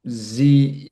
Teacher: that EU is actually a diphthong that makes this kind of oo or u sound like Zeus